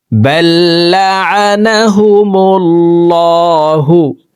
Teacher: আল্লাহ শব্দের আগের হরফে পেশ আছে এই কারণে এই লামকে মোটা করে অর্থাৎ ল বলে পড়ব দেখুন এইভাবে পড়তে হবে بل لعنهم الله بكفرهم فقليلا ما يؤمنون